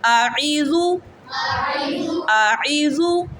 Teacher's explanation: حمزہ کی آواز نہیں نکالنی، عین کی آواز نکالنی، حلق کے درمیان سے